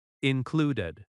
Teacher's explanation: Included has stress on clud.